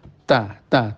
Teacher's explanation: makhrajnya ta pojok lidah mengenai akar gigi atas. Jadi ke atas ya, bukan di pojok gigi atas. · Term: hamesnya